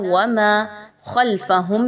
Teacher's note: خا آ گئی ہے جو کہ حروف مستعلیہ میں سے ہے، اس کو آپ پر پڑھیں گے، باریک نہیں پڑھنا خا کو